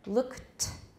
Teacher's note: k is voiceless. The ed is t, it's voiceless.